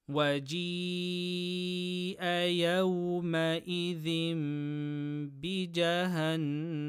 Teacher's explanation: Tanween before ba, qalb with ghunna. And noon mushaddada ghunna. · Stretch letter before hamza in the same word, mad muttaṣil, 4 harakas.